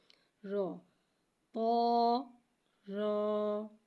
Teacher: رو کو ایک الف یعنی 2 حرکات کے برابر کھینچ کے پڑھیں گے۔ رو حرف مستعلیہ ہے لہٰذا ہم اسے موٹا پڑھیں گے، رو کی آواز حلق سے ادا ہوگی